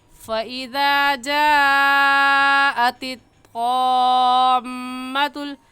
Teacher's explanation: इस मद को 5 अलिफ के बराबर खींच कर पढ़ेंगे, ना इससे कम और ना ही इससे ज़्यादा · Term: मद्दे लाजिम